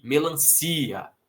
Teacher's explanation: A força não é no A, a força é no I, melancia. Então, sem acento para essa palavra.